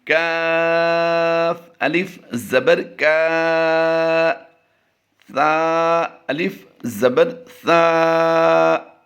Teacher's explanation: کاف باریک ہے اور سا کی ادائیگی بڑی نرمی سے کرنی ہے